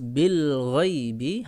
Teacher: Bil ghaibi di sini ada idhar qamariyah, dibaca jelas bil ghaibi, hati-hati tawallud bil ghaibi, ya, hati-hati bil ghaibi, ya, le-nya dihilangkan.